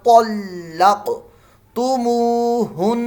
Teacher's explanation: کر لیا، وَإِن طَلَّقْتُمُوهُنَّ، وَإِن طَلَّق، قاف ساکن میں قلقلہ، اور یہ طا جو ہے یہ موٹی پڑ جائے گی، تلق تلق نہیں پڑھنا